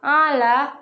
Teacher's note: terdapat hukum bacaan mad tabi'i yang dibaca secara panjang 2 harokat